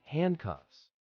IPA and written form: ˈhændˌkʌfs (handcuffs)